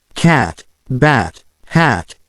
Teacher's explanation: you'll notice how the mouth stays open wider and the sound is short